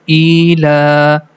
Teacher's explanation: And the next letter, lam, it has a standing fatha on the top, which means we have to stretch the la sound for two count. The first two syllable becomes ila and then fihim.